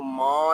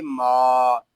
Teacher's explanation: میم کو ادا کرتے وقت کوشش کیجئے ناظرین کے ناک میں آواز نہ جائے، اس کو ماں نہیں پڑھیں گے، اس کو پڑھیں گے ما۔